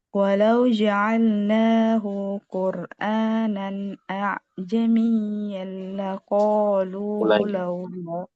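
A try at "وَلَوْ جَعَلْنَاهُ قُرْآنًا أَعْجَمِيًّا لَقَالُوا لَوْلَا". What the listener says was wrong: Tadi hu-nya agak panjang.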